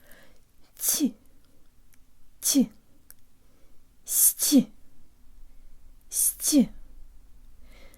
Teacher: The t is soft, so although the tip of your tongue is still behind your bottom teeth, the part behind the tip is very high, and you put lots more air through than in English.